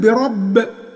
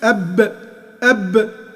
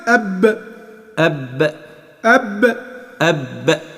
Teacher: بربي لو وقفت هتقول برب، هتبقى اسمها قلقلة